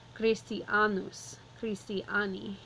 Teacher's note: So this is where our emphasis is going, on the long A.